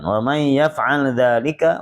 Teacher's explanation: wa may idgham bi gunah, masukkan ke hidung.